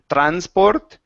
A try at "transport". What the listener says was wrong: Okay, watch that S instead of transport. Point your tongue down.